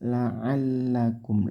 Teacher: Lamnya ditekan. Kumnya di sini idhar syafawi, tidak boleh dibaca dengung tapi jelas.